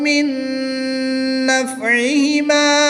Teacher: نون ساکن کے بعد حروف یرملون میں سے نون آ گیا تو یہاں پر ادغام مع الغنہ ہوگا، غنہ کر کے پڑھیں گے۔